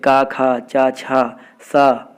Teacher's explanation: जिन ध्वनियों को उच्चारण में स्वर तंत्रों में कंपन उत्पन्न नहीं होता है उन्हें अघोष वर्ण कहते हैं